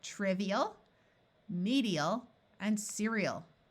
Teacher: It's not a clear EL song, but eel, because AL as a suffix by itself takes on the muffled schwa sound of ul